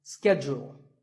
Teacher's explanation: In American English, this is schedule. The first syllable is ske and the second is jewel. Schedule. In British English, it can be both schedule or schedule.